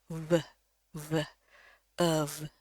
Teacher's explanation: Jadi pada dasarnya hampir semua bentuk yang weak ini kita ubah menjadi bunyinya ya, termasuk bunyi of. Ya, hati-hati di sini bukan F ya, tapi pakai V, dan V-nya itu harus bunyi dari pita suara. V, of.